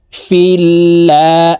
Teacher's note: খারা জবর লা আল্লাহ শব্দের আগের হরফে জের আছে এই কারণে এই লামকে পাতলা অর্থে অর্থাৎ লা বলেই পড়তে হবে